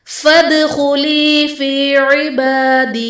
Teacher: फदखुली में दाल हर्फ कलकला साकिन है तो यहाँ पर कलकला खूब जाहिर करेंगे। फी इबादी में बा पर खड़ा ज़बर है जो कि अलिफ मद्दा के कायम मुकाम है, इसलिए इसे एक अलिफ यानी दो हरकत के बराबर खींच कर पढ़ेंगे।